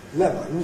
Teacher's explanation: A fall on the “lem”, a rise on the “on”. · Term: fall rise